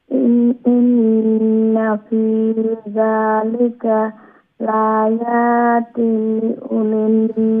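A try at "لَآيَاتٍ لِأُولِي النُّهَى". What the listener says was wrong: লায়াতিল লি, আবার লামজের লি উচ্চারণ করতে হবে, লায়াতিল লি উলিন নুহা,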